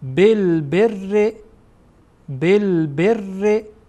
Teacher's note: این ب با را وصل میشه و را در اینجا ترقیق خوانده میشه یعنی باریک خوانده میشه بالبر بالبر این غلطه اشتباهه بالبر نباید گفت گفت گفت بالبریک